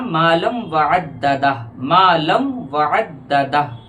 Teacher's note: लाम को वाव से मिलाना, लाम वाव दो ज़बर लम